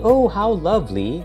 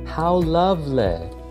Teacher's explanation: all the Y and LY sounds at the end of words become EH and LEH